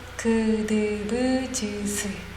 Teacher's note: 거칠지도 않고 성대도 긴장이 되지 않은 예사소리